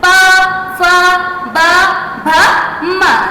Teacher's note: जब होठों से टच करेंगे मतलब होठ आपस में टच करेंगे तो ओष्ठ है